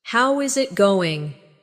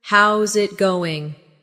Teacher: Instead, "How is it going?" becomes "How's it going?" The is disappears, and the final G in going often softens. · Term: connected speech